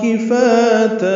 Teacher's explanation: کفاتا کاف باریک، فا الف مدہ ہے اور تا الف مدہ ہے، دو حرکات لمبا کریں گے. وقفاً تا کو 2 حرکات لمبا کرنا ہے، مد عوض بنی ہے.